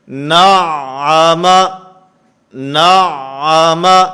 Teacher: نعم، نعم، اس کے اندر مخرج کا بھی خیال کرنا ہے اور اس کے ساتھ صفات کا خیال رکھتے ہوئے عین کے اندر آواز بند نہیں ہونی چاہیے، آواز بند ہوگی تو یہ عین نہیں رہے گا بلکہ حمزہ بن جائے گا۔